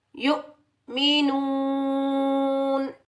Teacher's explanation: یا حمزہ پیش یو، میم کے نیچے زیر بغیر کھینچے پڑھیں گے، می، واؤ مدہ کو ایک الف کی مقدار میں کھینچ کر ادا کریں گے، نون، نون کے اوپر زبر، آگے آیت آ رہی ہے تو یہاں ہم وقف کریں گے۔ جب ہم وقف کریں گے تو نون کا زبر ختم ہو جائے گا، نون پر ہم عارضی جزم لگائیں گے، نون ساکن ادا کریں گے · ساکن حمزہ کو ہم جھٹکے سے ادا کریں گے، کھینچ کر ادا نہیں کریں گے۔